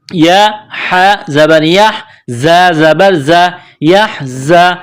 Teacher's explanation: زا میں سیٹی کی آواز پیدا کرنی ہے، دانتوں کو سختی کے ساتھ ملائیں گے زا کو پڑھتے وقت